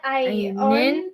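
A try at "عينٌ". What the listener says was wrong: the N is part of the word. On, and, N.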